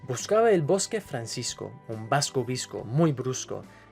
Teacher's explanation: the B or V at the beginning of a word is similar to the English B, but when it comes in the middle, it's softer, almost like a mix between B and V